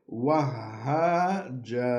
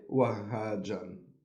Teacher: we just have to remove one fatha and recite the end of the verse as in the long vowel alif